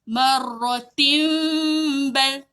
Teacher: Kita kena tukar bunyi nun pada bunyi mim. Kita tak sebut nun, kita sebut bunyi mim. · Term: iklab